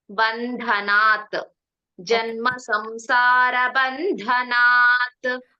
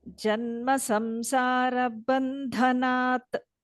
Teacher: ಹ ಮಹಾಪ್ರಾಣ ಇಲ್ಲ ಧ ಮಾತ್ರ ಮಹಾಪ್ರಾಣ ಇರೋದು